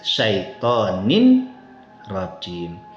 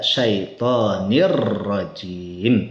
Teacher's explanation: Jadi dibaca syaitonir rajim, tanwinnya hilang, masuk ke huruf ro, diidghamkan, dimasukkan ke huruf setelahnya ro. Nah, masuknya tanpa gunnah. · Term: idgham bila gunnah